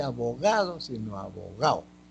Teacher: en la costa dice elisión de la D